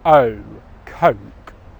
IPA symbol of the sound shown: əʊ